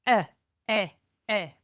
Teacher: the discomfort cry is a sharp high pitch cry